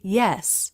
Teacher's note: the tongue tip is down while the middle of the tongue presses forward against the roof of the mouth